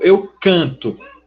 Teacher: a sílaba tônica, a sílaba forte, está no radical. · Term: formas risotônicas